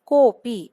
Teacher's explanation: पहले क और अपि यह दो शब्द थे उनमें संधि अगर की तो अ का लोप हो जाता है। अदृश्य हो जाता है और यही दिखाने के लिए अवग्रह चिन्ह का प्रयोग यहां पे किया हुआ है।